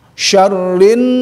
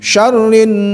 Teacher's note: Kalau ini ada gunnah, ada syaddadah, ada tekanan ya. Jadi syarrin tahan. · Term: gunnah musyaddadah